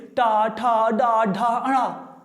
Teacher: जीभ आपकी उल्टी होकर के मूर्धा पे लग रही है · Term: मूर्धन्य